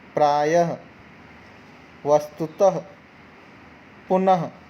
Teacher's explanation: जाता है विसर्ग की जगह आप आधा ह मान के चलिए जब हम इसको उच्चारण करेंगे तो ह का स्वर हल्का ह का स्वर आना चाहिए